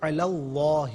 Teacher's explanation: حرف لام کو پر پڑھیں گے کہ ما قبل لام پر زبر ہے